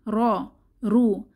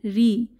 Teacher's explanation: রতে যখন জবর এবং পেশ হবে র হচ্ছে মোটা হবে, র রু, কিন্তু রতে যখন জের ধরে আমরা পড়ব তখন র পাতলা হবে।